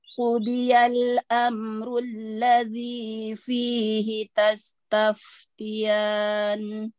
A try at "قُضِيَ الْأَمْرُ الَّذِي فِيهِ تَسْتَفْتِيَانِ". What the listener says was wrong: Terakhir, mat arif disukunnya sepertinya oh, kurang iya. Iya, kurang sedikit.